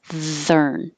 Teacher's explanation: Southern. And the TH is voiced.